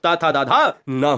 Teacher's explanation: यह दोस्तों दंत पे आ जाते हैं। ये दंत जो दांत की सहायता से बोले जाए वो दंत यानी दंत स्पर्श व्यंजन कहलाते हैं।